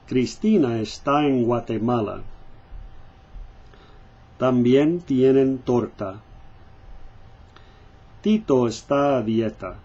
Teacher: Spanish T, same thing. You want to get the T with no air going through.